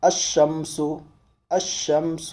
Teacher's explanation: لام کا تلفظ اس میں نہیں کریں گے، اس کو ہم تشدید کے ساتھ آگے ملا کر کے اس کو پڑھیں گے · جب اس پر الف لام ہم داخل کریں گے تو پڑھیں گے الشمس، الشمس، یعنی لام کو یہاں نہیں پڑھیں گے بلکہ الف کو شین کو ڈبل کر کے اس کو پڑھیں گے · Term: حروف شمسی